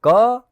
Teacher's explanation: તો જો ક એવું બોલું છું ત્યારે ક જે પહેલા અડધો બોલાય અને પછી અ સંભળાય, બે ધ્વનિઓ થયા · ક અને અ એવા તમને બે અલગ અલગ અવાજનું સંયોજન સંભળાવવું જોઈએ